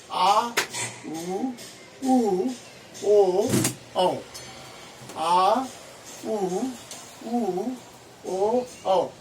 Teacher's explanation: जीभ का पीछे का भाग होता है पश्च स्वर